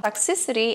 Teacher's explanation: a sílaba mais forte é o toxi